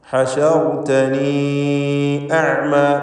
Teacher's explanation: ഹശർതനി അഅ്മ, ഇതിൽ യാഇൻ്റെ ദീർഘം മദ് മുൻഫസിൽ ജായിസ് എന്നതാണ്. 4-5 ഹറക്കത്തിൻ്റെ അളവിൽ യാഇനെ ദീർഘിപ്പിക്കുക.